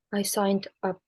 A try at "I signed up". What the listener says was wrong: Nah, itu masih putus-putus cara bacanya. I signed up. Lebih fatal lagi kalau kamu bilang I sign up. Ini I signed up. Karena ada konsonan de ketemu vowel sound u ya.